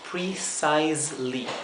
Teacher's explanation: enseguida después de la s la e es muda aquí entonces el sonido que le sigue es la l